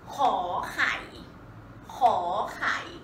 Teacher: Khò, rising tone. Khò is the sound.